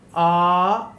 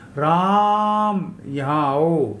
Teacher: हम जोर से बोलते हैं आलाप लेकर के, तो उसको बोलते हैं प्लुत